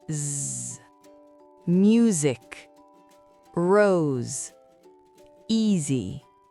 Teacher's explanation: Mais attention, entre deux voyelles, S devient souvent sonore. S se prononce alors Z.